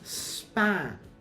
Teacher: In consonant clusters, such as SP, at the end of the consonant cluster, P is unaspirated and is also pronounced more lenis.